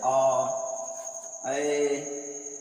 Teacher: जिन स्वरों के उच्चारण में मुख द्वार आधा खुलता है अर्ध विपरीत कहलाते हैं।